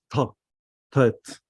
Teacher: It's more, you put the gesh strong on the t. You put your tongue at the top of your mouth, touching your tooth. Tet. The last letter tau, tet, tau, is much more light.